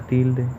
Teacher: En la palabra tilde, la sílaba tónica es til, porque es la que más suena de las dos.